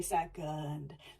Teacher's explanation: that e is being super super proud. It's saying e. It's really got a lot of stress on it.